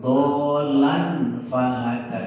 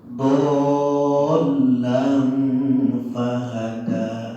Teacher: Ada lafaz fa, ya. Fa itu salah satu huruf ikhfa, ya. Maka kita ikhfakan, kita samarkan, kita dengungkan.